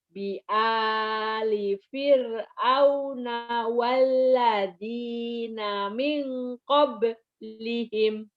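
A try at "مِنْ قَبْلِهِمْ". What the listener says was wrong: Kada bi ali fir'auna walladzina min qablihim. Masih ragu. Nih, walladzina min qablihim. Walladzina min qablihim. Minnya ditahan. Walladzina min qablihim.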